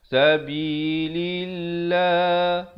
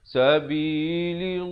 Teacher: Lafzu jalalah di sini dibaca nipis pula.